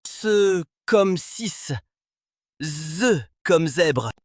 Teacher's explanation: Le se pour la version non voisée et le ze pour la version voisée sont des prédorsaux-alvéolaires, c'est-à-dire que le dos de la langue vient toucher l'alvéole. Se comme 6, ze comme zèbre.